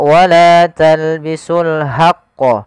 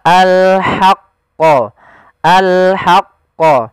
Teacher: kita mengeluarkan dari tengah tenggorokan kita ha disertai dengan adanya nafas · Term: huruf ha kecil